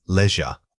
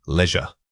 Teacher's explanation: The stress falls on the first syllable, but the overall flow must feel relaxed. Try saying it with a slightly slower tempo to ensure you are hitting that clear long e sound.